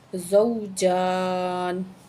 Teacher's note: زا کو واو کے ساتھ ملائیں گے، زا کو سختی کے ساتھ پڑھیں گے، ٹھیک ہے۔ اور جیم کے اوپر جو ہے وہ کھڑی زبر ہے، ایک الف کے برابر کھینچ کے پڑھیں گے اس کو، زوجان، ٹھیک ہے۔